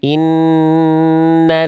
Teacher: tipiskan lamnya. Jangan nal nal nal. Jangan naik pangkal lidahnya. Innalla jangan innall nal.